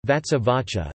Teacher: the sibilant assimilates to the preceding sound as an aspirate